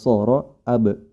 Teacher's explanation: huruf hamzah yang berhakat fathah pada kata ab ab jangan sampai ikut tebal